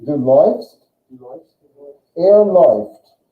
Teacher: And that sound, umlaut AU, makes that oi sound.